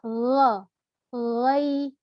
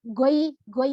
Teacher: termasuk huruf halqiyah yang berasal dari tenggorokan yang mana dia ini dari tenggorokan yang paling atas